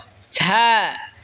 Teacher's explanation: ঝা জিহ্বার আগা সামনের নিচের দুই দাঁতের আগার দিকে লাগায় উচ্চারণ হবে ঝা